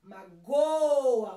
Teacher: Magoa, o go é o mais forte.